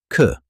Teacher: the aspirated sound, k, has a burst of air, like a stronger k.